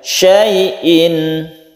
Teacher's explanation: Ada tanwin bertemu dengan ain, kita baca idhar halqi, kita baca jelas dan tidak berdengung.